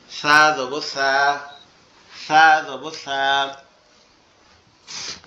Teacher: সার আওয়াজটা নরম হবে, জিহ্বার আগা উপরের দুই দাঁতের আগার সঙ্গে লাগবে।